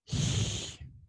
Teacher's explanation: it has a voiceless lateral fricative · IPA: /ɬ/